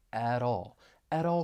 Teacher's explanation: you're going to hear me pronounce it as a flap T it's going to sound like a soft D because the t comes between two vowel sounds and then I can link that flap t with the vowel · I can link that flap t with the vowel sound in all